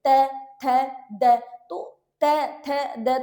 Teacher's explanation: जीभ दांतों के बीच में आके उच्चारण कर रही है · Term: दंत्य